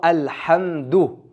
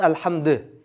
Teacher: Erin cho'zilmay qolsa unda u harakat to'liq chiqmay qoladi i o'xshab qoladi.